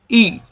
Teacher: প্রথম হামজা জেরি ই মিলবে ইয়ার সাথে, ই জিব্বার মাঝখান উপরে তালুতে চাপ দিয়ে ই